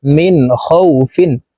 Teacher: জের মিন নুন সাকিনের পরে ইজহারের হরফ খ আসছে এই কারণে এই নুন সাকিন কে গুন্নাহ ছাড়া স্পষ্ট করিয়া পড়বো